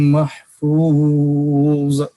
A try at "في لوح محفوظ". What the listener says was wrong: محفوظ قلقلہ نہیں کرنا.